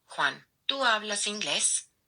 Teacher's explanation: So you see, the intonation rises at the end.